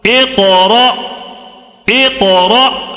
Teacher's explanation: جب بھی حمزہ کے اوپر جزم ہو تو وہاں پہ تھوڑا جھٹکا دے کے پڑھنا، اس کے علاوہ کہیں بھی قرآن میں جھٹکا نہیں دینا ہے، ٹھیک ہے؟ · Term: حمزہ ساکنہ